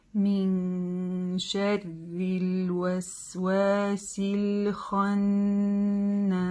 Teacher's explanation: удвоенная нун, мы ее протягиваем чуть-чуть дольше, назализацию делаем. Син в конце резко не отрываем, как уже и было в предыдущих примерах.